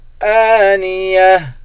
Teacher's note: حمزہ پر کھڑا زبر ہے، حمزے کو ایک الف کی مقدار کھینچ کر پڑھیں گے · گولتا پر جب وقف کرتے ہیں گولتا ہا بن جاتی ہے